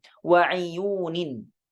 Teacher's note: bi kasril ain dengan mengkasrahkan huruf ain